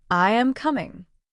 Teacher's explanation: Your voice goes down softly, showing that the sentence is finished.